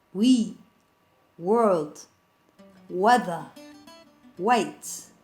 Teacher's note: The W sound or labiovelar approximant.